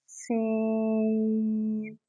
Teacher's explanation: سین کو ہم سیٹی سے پڑھیں گے